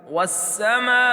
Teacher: الف کے اوپر بڑی مد ہونے کی وجہ سے اس کو ہم 5 الف کے برابر کھینچ کر پڑھیں گے